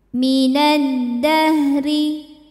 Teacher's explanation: Sebab alif lam menghadapi huruf syamsiyah yaitu dal. Cara bacanya alif lam tidak kita baca atau disebut dengan idgham syamsi.